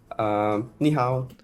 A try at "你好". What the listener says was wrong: So he said, ni hao. So it's ni hao, ni hao, ni hao. So the tones are gone.